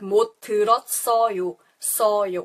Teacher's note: And once again, the T, it doesn't really have the strong t like tomato or train. It doesn't have the strong T sound, but rather it sounds like a S. So this S goes to the next spelling the syllable and it makes a S sound.